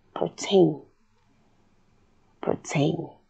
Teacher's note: you'll notice that the rhotic schwa comes out like the /r/ sound itself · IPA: /pɚteɪn/